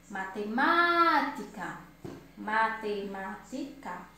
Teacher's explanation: Então, ma é a sílaba mais forte, certo? Então, ela é proparoxítona.